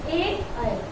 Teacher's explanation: ए ऐ कंठ से और तालु से दोनों से टच हो रहा है बोलने में स्वर। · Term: कंठ ताल